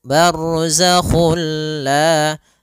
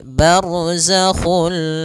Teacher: kita memasukkannya secara utuh, secara seluruhan kepada huruf lam sehingga tidak menyisakan sedikit daripada bunyi huruf nunnya ya. Sehingga langsung masuk barzakhulla dan dia bila ghunah berarti tidak boleh disertai dengan ghunah. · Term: idgham kamil